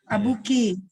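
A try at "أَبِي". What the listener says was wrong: Enggak abi. Ini kan ya doang. Kalau ki baru abuki.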